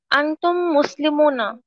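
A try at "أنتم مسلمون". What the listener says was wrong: মুসলিমুনা, একটু লম্বা করে বলতে হবে।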